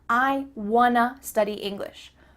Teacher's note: Here we're changing want to wanna. Again, the word to changes to a.